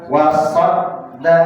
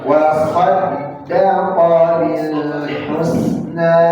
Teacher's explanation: Berarti tasydid dal, jangan sampai keluar suara ta.